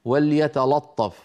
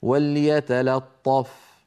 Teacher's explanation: بعد ان ينطق اللام مرققه ينتقل الى الطاء المفخمه